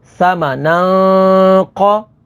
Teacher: یہاں پر ناظرین تنوین کے بعد قاف ہے، قاف حروف اخفا میں سے ہے، تو یہاں پر اخفا ہوگا یعنی غنہ کر کے پڑھیں گے۔